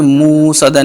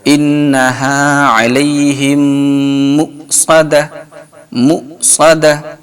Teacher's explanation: یہاں پہ حمزہ ساکنہ ہے اس لیے یہاں پہ جھٹکا ہوگا